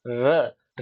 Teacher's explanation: रे का जो उच्चारण स्थान है दंतमूल या मसूड़ा, र र को उच्चारित करेंगे, जो अपनी जीभ है जो आपकी, वो आपके मसूड़ा या दांत दांत के थोड़ा सा पीछे की ओर स्पर्श करती हुई इसका उच्चारित करेगी।